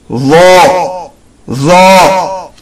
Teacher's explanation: Dha is pronounced with tip of the tongue and from the edge of upper incisor teeth. The tip of tongue should come out a little. Read it heavy as Dha, Dha.